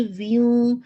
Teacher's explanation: واو پہ یہ آپ کا ناقص ادغام ہے وتھ اکمل غنہ